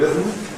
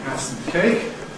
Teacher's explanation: A schwa + [m] producing a syllabic [m̩]